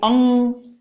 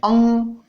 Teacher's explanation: अनुस्वार जो है, अनुस्वार का उच्चारण करते समय अनुस्वार का जब उच्चारण करते हैं तब उच्चारण नासिका से होता है, मुंह से नहीं होकर के आवाज नासिका से निकलती है। जैसे ये अ है और अ के ऊपर मैंने अनुस्वार लगा दिया तो जो ध्वनि निकलेगी वो अंग, नाक से, नाक में कुछ झंझनाहट सी होती है क्योंकि उच्चारण स्थान इसका नासिका है, अंग।